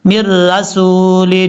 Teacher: اس کو جھٹکے کے ساتھ پڑھنا ہے، ما یأتیہم من رسول، میم کو را سے کنیکٹ کریں گے، بیچ میں نون کو چھوڑ دیں گے ، من رسول الا کانوا بہ یستہزئون، تا کے بعد جو